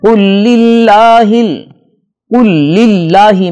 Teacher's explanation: اللہ کے لفظ سے پہلے لام کے نیچے زیر ہے، لہذا ہم اس کو باریک پڑھیں گے۔